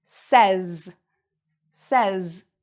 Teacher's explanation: And notice the S here. So this S actually sounds like a Z sound, a Z sound.